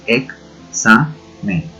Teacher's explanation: cuando nosotros pronunciamos una X, estamos pronunciando el sonido K y S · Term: doble consonante